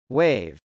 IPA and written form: wˈeɪv (wave)